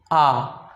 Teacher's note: विवृत का मतलब हुआ खुला हुआ, इसमें मुख एकदम खुल जाता है, बोलिए आ, यानी संपूर्ण मुख खुला रहता है। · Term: विवृत स्वर